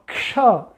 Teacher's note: तो नहीं, ये मिलकर के बना है। इसमें पहले क है, फिर मूर्धन्य श है, फिर उसके बाद में अ है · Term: संयुक्त वर्ण